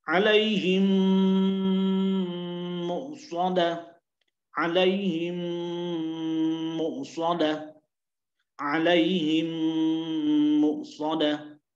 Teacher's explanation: mim sukun ini akan dimasukkan ke dalam mim yang berikutnya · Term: al-idgham mithlaini